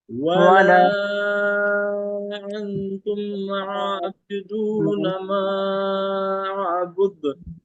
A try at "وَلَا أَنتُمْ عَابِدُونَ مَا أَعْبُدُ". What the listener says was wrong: عابد عابد بالکل کلیئرلی واضح ہونا چاہیے.